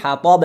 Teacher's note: د درجه پر خوانده میشه حطاب حتب به حرف ت نشوه اگر وقف کنیم حطاب قلقله میشه قلقله وسطی